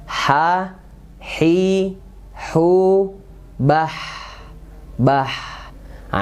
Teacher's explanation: H kecil yaitu di tengah tenggorokan · Ha ini hurufnya tipis. Ha. Pas dia sukun ada mengalir.